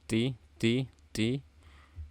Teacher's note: Ini ada ta, jangan lupa hamasnya